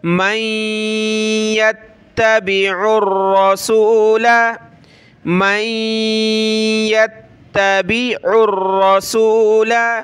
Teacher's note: را کو موٹا کریں گے